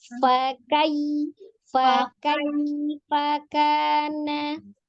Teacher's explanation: Jadi kaf itu sifatnya alhams. Gitu ya, tapi dia sidah. Jadi yang ngalir itu nafasnya bukan suaranya gitu.